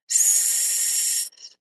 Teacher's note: This sound is continuous with steady airflow. S. You can keep going until you run out of breath.